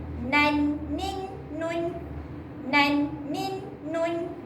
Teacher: Hujung lidah mesti bertemu dengan gusi atas, baru sempurna bunyi dia.